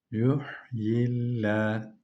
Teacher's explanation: Bu lam ince okunacak. Allah lafzın lamı. Çünkü kendisinden önceki harfte esre